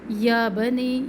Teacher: یا بنی یا کے اوپر کھڑا زبر الف مدہ کے قائم مقام. بنی مدہ بھی ہے اور بڑی مد بھی ہے تو ہم نے 3 الف کے برابر اس کو لمبا کرنا ہے